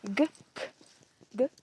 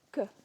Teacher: they're the exact same except G is unaspirated and K is aspirated